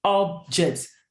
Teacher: the stress will surely be on the first part of the word, which is the first syllable, which is up.